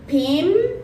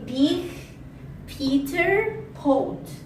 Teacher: Our next phoneme is P. According to voicing is voiceless. Place of articulation is bilabial. Manner of articulation is plosive